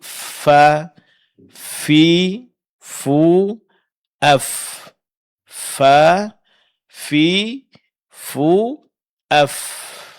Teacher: huruf fa makhrajnya dari bibir bagian dalam beserta ujung gigi depan bagian atas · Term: makhraj huruf fa